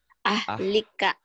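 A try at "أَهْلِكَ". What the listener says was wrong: Ahnya jangan ke di tenggorokan. Tapi di dada. Kayak masuk angin. Ahlika.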